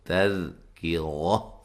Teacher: تا کو باریک پڑھیں گے، دال کو ہلا کے نہیں پڑھنا، کاف کو باریک پڑھیں گے اور را کو موٹا ادا کریں گے